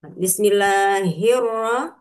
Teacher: Jadi alif lamnya tidak dibaca. Jadi hirrah jadi ee h-nya melebur ke huruf ro. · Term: idgham syamsi